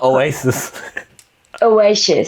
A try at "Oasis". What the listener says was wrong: 너 사실 너 shis 할 때 너 SHIS이라고 하고 있는데 그냥 sis이야.